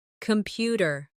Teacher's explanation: Computer. The stress is on the second syllable. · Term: word stress